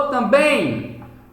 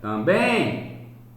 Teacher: Veja que o bem, ele sai mais forte. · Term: sílaba mais forte